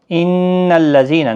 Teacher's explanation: ان الذين، نون مشدد پر غنہ ہوگا، ذی یا مدہ ہے، ایک الف کی مقدار کے برابر کھینچ کر پڑھیں گے